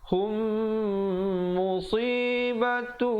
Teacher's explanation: idgham mislin saghir, mim mati bertemu mim, kadar panjangnya dengung 2 harakat